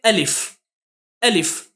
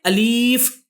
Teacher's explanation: جیسے کہ الف الف اس طرح سے جلدی پڑھنا ہے، نہ کہ الیف کھینچ کر پڑھنا ہے. اس طرح سے نہیں پڑھیں گے بلکہ الف الف.